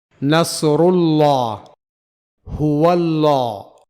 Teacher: لفظ اللہ سے پہلے ضمہ یعنی پیش یا فتحہ یعنی زبر ہو تو اس کے لام کو موٹا پڑھا جائے گا، یعنی اسے ہیوی لام پڑھا جائے گا، جسے انگریزی میں ڈارک ایل کہا جاتا ہے۔ · تو عربی کا موٹا لام یعنی انگریزی کا ڈارک ایل